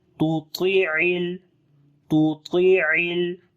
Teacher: Ain read from the middle of the throat. And ain we connect with the lam on the next page.